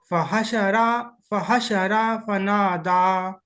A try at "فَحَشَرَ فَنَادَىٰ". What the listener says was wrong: रा को नहीं खींचना, रा मुतहरिक है ना। फहशर फनादा, फहशर फनादा, फहशर फनादा, فحشر، فحشر، فحشر فنادى। र को मोटा पढ़ना है।